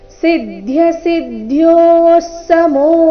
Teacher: ವಿಸರ್ಗದ ಉಚ್ಚಾರಣೆ ಅರ್ಧ ಸ ಮತ್ತೆ ಮುಂದಿನ ಶಬ್ದ ಸಮೋ ಒಟ್ಟಿಗೆ